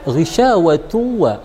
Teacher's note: Di sana dia syakalnya dhammatain berhadapan dengan huruf waw, maka ghisyawatu wa kita tekan selama 2 harakat di sana karena hukumnya adalah idgham bi gunnah